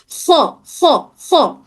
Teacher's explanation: खो भी खो खो थोड़ी सी खरखरी आवाज होती है खो में। खो खो खो। · हमारे हलक के बिल्कुल ऊपरी ही हिस्से से अदा होता है। खो भी खो खो थोड़ी सी खरखरी आवाज होती है खो में।